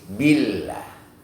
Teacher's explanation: harful jalalah diawali dengan kasrah, maka dia harus dibaca tipis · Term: tarqiq